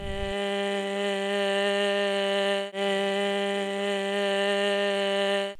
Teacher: I'm hearing air leak or white noise from turbulent airflow. That means we should see a gap in the vocal cords that never disappears while we're doing stroboscopy. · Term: hoarse voice